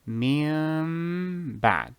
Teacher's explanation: You switch the noon to a meme in a subtle manner. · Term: Eqlaab